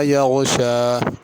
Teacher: یغشا میں غین کو پر کر کے پڑھنا، یغشا کر کے نہیں پڑھنا۔